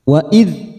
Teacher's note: Wa idz ada huruf dzal sukun, hati-hati karena bukan qalqalah kita tahan